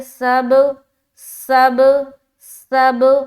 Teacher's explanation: یہاں پر با کے اوپر جزم آ گیا تو با میں قلقلہ ہوگا، با حروف قلقلہ میں سے ایک ہے.